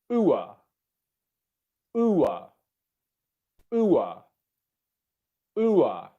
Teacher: So as for actually how we excuse me, as for actually how we pronounce the ua diphthong, it's quite a simple sound to make, because we're starting in the oo position and then going down to the schwa